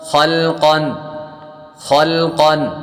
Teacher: خا حروف مستعلیہ میں سے ہے پر پڑھیں گے، قاف بھی حروف مستعلیہ میں سے ہے پر پڑھیں گے